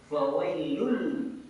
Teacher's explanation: hukum tajwidnya adalah idgham Bila ghunah kita memasukkan tanpa mendengungkan